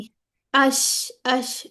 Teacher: जब वसतुल लिसान हनकुल आला के करीब जाती है तो शीन अदा होता है